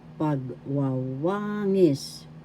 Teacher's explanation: The third syllable has the accent.